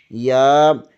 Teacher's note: وسط زبان بالمقابل اوپر کے تالو سے لگے تو یا ادا ہوتا ہے